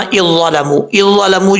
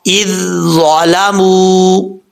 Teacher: پہلے ذال کی صفات آئیں گی پھر ضا کی